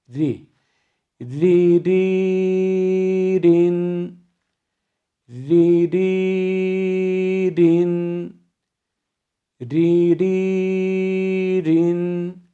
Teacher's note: Kesre konumunda ra harfi ince okunur. Tamamen Rize'nin risi, birinci hecesi, ri şeklinde kalınlık karıştırmadan okumamız gerekiyor.